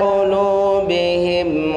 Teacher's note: lu-nya panjangnya satu alif atau satu tekanan